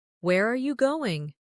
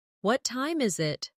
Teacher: for information questions, those starting with who, what, when, where, why, how, the tone often falls at the end.